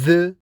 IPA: ð